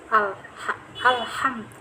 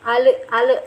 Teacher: Izhar qamari itu jelas al, karena alif lam ini bertemu dengan huruf qamariyah, yaitu ha, harus jelas al, ha, alham.